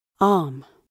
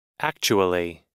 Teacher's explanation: This pronunciation of arm begins gradually. While this pronunciation of actually begins very clearly with hard attack.